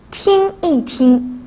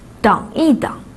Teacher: Lorsqu'il est utilisé au milieu d'une duplication de verbes, il se prononce au ton neutre.